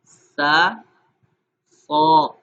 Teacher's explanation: سین اور صاد میں فرق یہ ہے کہ دونوں کا مخرج ایک ہے، ایک ہی جیسے پڑھے جاتے ہیں، سین کو باریک پڑھا تھا، صاد کو موٹا کیا جائے گا